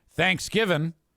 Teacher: you can say Thanksgiving with no g at the end like Hillbillies do and that's okay as long as you emphasize the second vowel